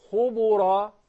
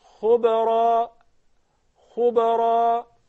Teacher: The qalqala would not adopt the vowel of the previous letter. So I would not say khubura.